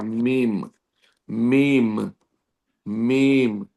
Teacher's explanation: میم ہونٹوں کے خشک حصے سے ادا ہوتا. اب میم دونوں ہونٹ جو ہیں اندر کے حصے سے ادا نہیں ہوتا، دونوں ہونٹوں کے باہری حصے سے ادا ہوتا.